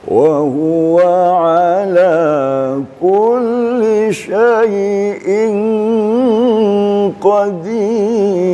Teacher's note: boleh lanjutkan dengan bayati jawab satu, tingkatan nada sedang